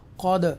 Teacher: with echo sound के साथ हम दाल को पढ़ेंगे, जिसको हम उर्दू में जुम्बिश भी कहते हैं